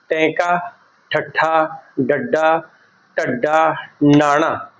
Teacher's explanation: ਸਾਡੀ ਜੀਭ ਹੈ ਜਿਹੜੀ ਉਲਟ ਕੇ ਤਾਲੂਏ ਨਾਲ ਲੱਗਦੀ ਹੈ